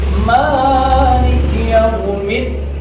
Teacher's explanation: Nah, ma-nya panjang ya, 2 harokat. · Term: panjang 2 harokat